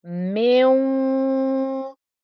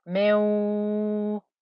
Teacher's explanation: So you get 50% ghunna and 50% noise of the wow.